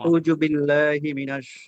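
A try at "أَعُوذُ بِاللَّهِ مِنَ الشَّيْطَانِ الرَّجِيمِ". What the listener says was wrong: দরকার নাই তো, আপনি ঠান্ডা মাথায় আস্তে আস্তে আউযু বিল্লাহ।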